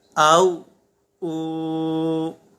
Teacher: تو واو ساکنہ سے پہلے پیش ہے، اسے ایک الف تک کھینچ کر پڑھیں گے